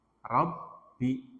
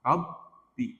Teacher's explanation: Jadi seakan-akan ada ba sukun dan ada ba berharokat kasrah. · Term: tasydid